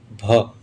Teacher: स्पर्श, घोष, महाप्राण, ओष्ठ व्यंजन ध्वनि